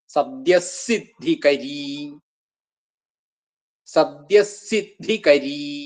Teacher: സദ്യ എന്ന് കഴിഞ്ഞിട്ടുള്ള വിസർഗം സിദ്ധികരി എന്നുള്ളതിന്റെ കൂടെ കൂടുമ്പോ വിസർഗം സകാരായിട്ട് ഇരട്ടിച്ചു വരും